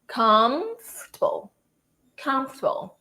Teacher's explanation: You stress the com, and then the rest of it, it just goes out naturally.